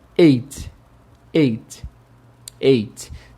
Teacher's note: Tem o som de E e o som de T bem fraquinho no final.